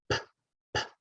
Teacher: Our lips are together, p, and we feel that puff of air.